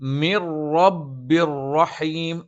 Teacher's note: നൂനിന് ശേഷവും തെൻവീന് ശേഷമൊക്കെ റാ വന്നാൽ അത് ഇദ്ഗാമും ബിലാഗുന്നയാണ്. നൂനിനെയും തെൻവീനിനെയും ശേഷമുള്ള റായിലേക്ക് ചേർക്കും, പക്ഷേ മണിക്കില്ല.